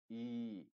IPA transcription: i: